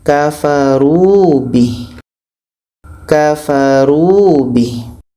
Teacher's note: Jadi hi ini sebetulnya dibaca panjang kalau kita wasalkan, kalau kita sambung. Tapi seandainya kita berhenti, ha damir yang panjang ya kecil ini akhirnya tidak kita baca panjang lagi. Hal damir ini kita sukunkan, kita matikan.